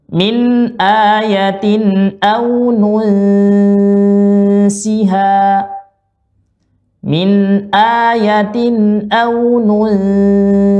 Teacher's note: Kalau ke huruf sin, maka posisi ujung lidah kita ke bawah, ke arah gigi seri bawah.